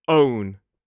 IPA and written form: əʊn (own)